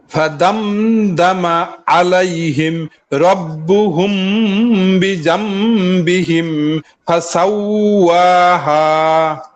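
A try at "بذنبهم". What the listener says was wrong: জাল বিজাম এখানে পাতলা হলে আরেকটু শোনা যাবে। এগুলো কিন্তু মারাত্মক কোনো ভুল না, এগুলো হলো পড়ার সৌন্দর্য।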